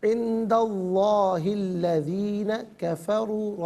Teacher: گے، درمیان سے حمزہ یعنی الف کو حذف کیا جائے گا، لفظ اللہ کی لام سے پہلے والے حرف دال پر زبر ہے، لفظ اللہ کی لام کو پر کر کے پڑھا جائے گا